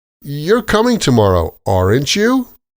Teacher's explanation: We use tag questions with rising intonation to confirm information